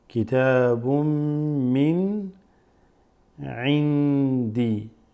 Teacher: This noon, sakina, followed by dal, followed by a dal, makes it ikhfa.